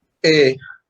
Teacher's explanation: Se carga la voz en la penúltima sílaba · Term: llana o grave